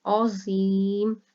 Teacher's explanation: عین جو ہے اس کو حلق سے زو کو موٹا کیا جائے گا اور یہاں پر یا مدہ ہو رہا ہے، اس لیے لمبا کریں گے، اور میم کے اوپر ساکن ہو رہا ہے، مد عارض ہو رہا ہے، ٹھیک ہے، تو اس وجہ سے یہ لفظ تھوڑا سا لمبا کر کے پڑھا جائے گا۔